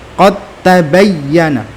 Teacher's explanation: qad langsung masuk, dalnya masuk ke ta secara sempurna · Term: idgham mutajanisain